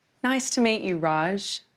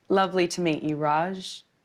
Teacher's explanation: When we use the word to in the middle of a phrase, the sound changes. Instead of an ooh sound, it becomes a schwa sound.